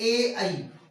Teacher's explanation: ए और ऐ का उच्चारण स्थान कंठ तालु होता है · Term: कंठ तालव्य वर्ण